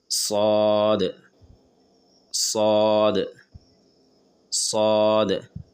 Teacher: जबान का पिछला हिस्सा यानी कि सबसे आखिरी हिस्सा जो हलक के पास है वो ऊपर उठता है। स्वाद स्वाद स्वाद और आवाज मोटा होता है। · जबान के दोनों साइड को तालू में सटाकर जबान के बीच से मोटी आवाज निकालते हुए स्वाद अदा होते हैं। और जबान का पिछला हिस्सा हलक के पास यानी के जबान का पिछला हिस्सा यानी कि सबसे आखिरी हिस्सा जो हलक के पास है वो ऊपर उठता है। · ادا کیسے کریں گے؟ زبان کے دونوں سائڈ کو تالو میں سٹا کر زبان کے بیچ سے موٹی آواز نکالتے ہوئے صاد ادا ہوتے ہیں، اور زبان کا پچھلا حصہ حلق کے پاس، یعنی کہ زبان کا پچھلا حصہ یعنی کہ سب سے آخری حصہ جو حلق کے پاس ہے وہ اوپر اٹھتا ہے.